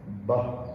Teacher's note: The two lips touch each other, blocking the airflow and then releasing the airflow.